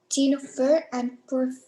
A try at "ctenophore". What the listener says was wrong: Ctenophore, not T.